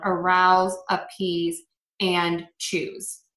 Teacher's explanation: choose those are all going to be pronounced with the z so again s e at the end of a verb we're going to pronounce that as a z sound